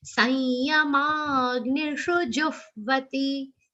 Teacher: Sanyama, ma, long sound with a subtle aghat of ga.